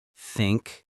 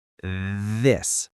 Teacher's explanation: The soft th, like in think or thank you blow out air softly. The hard th, like in this or that, you make a small vibration with your voice.